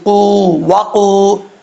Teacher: Okay, اب اس کے بعد جو ورڈ ہے لفظ ہے وقودھا، واؤ کو پڑھتے وقت ہونٹ گول کریں گے، اس کو وا نہیں پڑھنا، وا قاف واؤ پیش قو، وقو، قاف کے اوپر دو نقطے ہیں، دو نقطوں والا جو قاف ہوتا ہے وہ فل ماؤتھ پڑھا جاتا ہے، موٹا پڑھا جاتا ہے، یعنی جس کو تجوید کی اصطلاح میں کہتے ہیں پر پڑھا جاتا ہے، تو اس کو پر کر کے پڑھیں گے۔